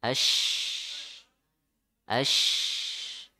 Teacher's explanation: shin itu menyebar suaranya ya, napasnya menyebar.